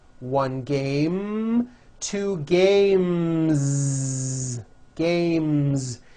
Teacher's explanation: The last sound you hear in the word game is the M sound, which is a voiced consonant. So because of that, when you add an S, the S should also be voiced.